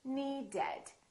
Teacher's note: the word need ends with a d so we say needed we add an extra syllable